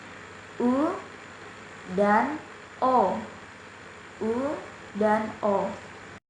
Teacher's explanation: vokal belakang, yakni vokal yang dihasilkan oleh gerakan turun naiknya lidah bagian belakang atau pangkal lidah. Bunyi yang dihasilkan seperti U dan O.